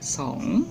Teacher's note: Song terdiri dari konsonan kelas atas S ditambah vokal panjang O dan ditambah konsonan akhir eng yang merupakan akhiran hidup, maka nadanya nada 5 ya atau nada bangkit rising tone. Song artinya 2.